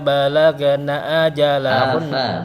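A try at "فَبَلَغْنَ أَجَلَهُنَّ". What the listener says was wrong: fa-nya hilang, fa-nya dikemanain? Afa balaghna ajalahunna.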